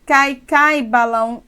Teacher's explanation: eu tenho nesse cai uma única sílaba, já que o A é mais forte que o I